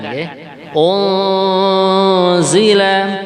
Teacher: nun mati berjumpa dengan Za namanya ikhfa kita dengungkan